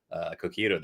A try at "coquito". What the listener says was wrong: Are you pronouncing it Cojito?